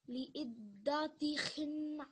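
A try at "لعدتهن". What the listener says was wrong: So you don't want the ah sound at the end. You want to put the sukoon there. Li'iddatihin.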